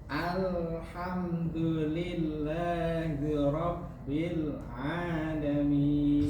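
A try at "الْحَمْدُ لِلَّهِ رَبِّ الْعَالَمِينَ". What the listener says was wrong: Sedikit hi-nya kurang. Alhamdulillahi rabbi.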